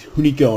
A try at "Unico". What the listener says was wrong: Actually, they're pronouncing it Unico. The H is silent now. They're saying the H is silent now, so we're no longer calling Unico.